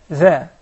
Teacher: notice that the dhal is muraqqaqa. It is not like the kha. Okay. So the kha is mufakhama, but do not sacrifice the dhal for the sake of the kha.